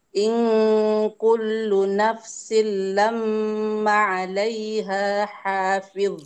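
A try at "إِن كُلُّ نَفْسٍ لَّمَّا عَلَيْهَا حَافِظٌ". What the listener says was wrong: Mannya dibaca panjang Bu.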